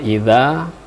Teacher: Jadi wa idza, nah kemudian di idza dza tersebut terdapat mat asli atau disebut mat tabi'i alif. ya, satu alif dua harakat